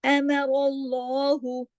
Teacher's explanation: صرف اس میں را کو ہم موٹا پڑھیں گے